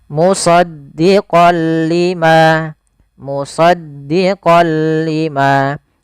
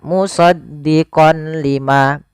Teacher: memasukkan apa suara nunnya kepada huruf lam tapi tidak boleh disertai dengan gunah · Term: Idgham bila gunah